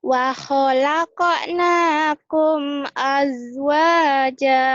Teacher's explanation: Aznya enggak ada kol-kolah ya.